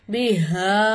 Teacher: 3 அலிஃபுக்கு நம்ம நீட்டி ஓதணும் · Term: சின்ன மது